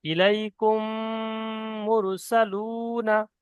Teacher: মিম সাকিনকে মিমের সাথে মিলিয়ে গুন্না সহ পড়তে হবে। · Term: ঈদগামের স্বাভাবিক